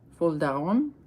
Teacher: it's the French rolled R